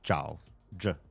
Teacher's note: his last or seen seen J's last same it's j j it's like a j but in the back of your mouth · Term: back J